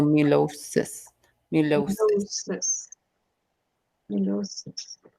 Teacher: It's like kind of got a O. It's like a long O, but it blends into the S. So melosis.